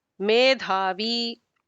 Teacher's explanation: Medhavi is also again the dha is Mahaprana